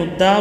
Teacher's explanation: دار را کو موٹا پڑھا جائے گا